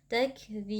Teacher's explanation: Jadi huruf ba-nya kita pantulkan. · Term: qalqalah kubra